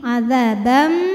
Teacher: Karena ada tanwin fathah yang menghadapi huruf mim, maka tanwinnya dimasukkan ke mim. Azabam bunyi M dan ditahan, dengungkan. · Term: idgham bi gunnah